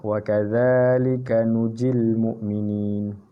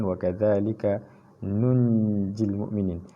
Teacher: Nun baris depan bertemu dengan nun mati bertemu jim. Nun mati bertemu jim, maka perlu dengung di sini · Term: ikhfa hakiki